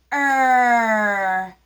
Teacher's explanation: your tongue is not not touching the roof of your mouth your tongue goes back but it does not touch up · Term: r sound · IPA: [r]